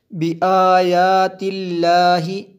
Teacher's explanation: یہ لفظ اللہ کو باریک پڑھیں گے کیونکہ اس سے پہلے والے لفظ کے نیچے زیر ہے